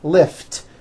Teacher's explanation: lift ends with an unvoiced T